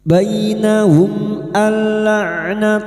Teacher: Nun sukun atau tanwin yang bertemu dengan dua huruf ini yaitu huruf lam dan ro masuk pada huruf lam tanpa mendengung. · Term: idgham, idgham bila gunah